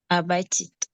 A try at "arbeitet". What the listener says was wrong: We have to hear the et at the end. Arbeitet.